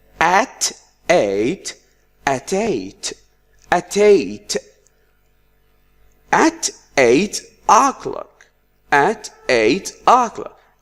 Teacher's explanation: Now we link the T sound with the E or A sound, but most students don't know what do we do to link. In fact, we omit or make the sound at the beginning of the vowel disappear so that it becomes easier to say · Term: consonant vowel